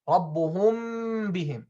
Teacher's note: he closed his lips on the two letters with one application of the makhraj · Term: ikhfa shafawi